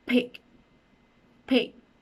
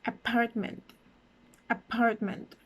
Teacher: both of my lips are touching or pronouncing the sound so this would be considered a bilabial sound